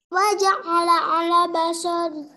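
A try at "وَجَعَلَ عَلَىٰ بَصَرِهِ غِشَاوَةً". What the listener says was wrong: Alanya panjang. Waja'ala ala. Lanya panjang enggak? Waja'ala ala la gitu. Fathah panjang ya. Yang teliti. Coba ulang.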